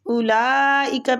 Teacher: اولئک پہ جو مد ہو رہی ہے یہ بھی مد واجب متصل ہو رہی ہے، اس کو کھینچنے کی مقدار بھی 4 سے 5 حرکات ہیں